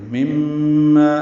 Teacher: میم شدت پہ غنہ ہے، ما الف مدہ ہے، 2 حرکات لمبا ہے